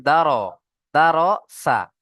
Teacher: পুর করে পড়তে হবে, অর্থাৎ মুখটা গোল করে পড়তে হবে।